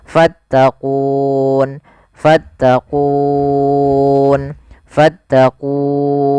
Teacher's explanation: Awalnya fattaquuni karena kita wakaf nunnya dimatikan huruf wunnya sebelumnya mati awalnya kan ku dua harakat karena ada sukun arid menjadi kita boleh membaca dengan tiga pilihan boleh dua harakat boleh empat harakat boleh pula enam harakat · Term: mad arid lukun